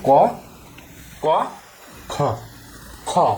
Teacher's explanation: প্রতিটা বর্গের দ্বিতীয় এবং চতুর্থ এই ধ্বনিগুলোই হচ্ছে মহাপ্রাণ ধ্বনি। ক যখন উচ্চারণ করবে সেই সময় এই জিনিসটা থাকছে না। কিন্তু যখন খ উচ্চারণ করবে দেখো ক খ এই খ উচ্চারণ করার সময় একটা হ পিছনে থাকছে।